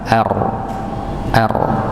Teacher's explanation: Dia punya sifat juga mengalir tidak tertahan juga. Dia punya sifat takrir takrir itu bergetar.